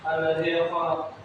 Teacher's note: huruf zal berharakat kasrah bertemu ya sukun. Cara bacanya dipanjangkan 2 harakat. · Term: maqtabi'i